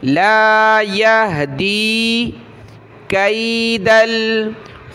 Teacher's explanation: دال یا زیر دی، دال کو نیچے کی طرف تھوڑا سا کھینچیں گے، یا کی طرف، لا یہدی کید الخائنین۔